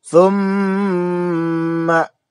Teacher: ada mim bertasydid, namanya gunnah, ya, gunnah musaddadah, dibaca dengung, jangan kurang daripada 2 harokat